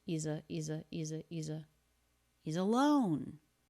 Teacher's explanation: do you hear that always always always always always always and the apostrophe s here is the z sound and it links the E vowel and the schwa of alone